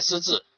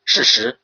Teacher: 在于这个舌尖前还是舌尖后，就是我们说的平舌音还是翘舌音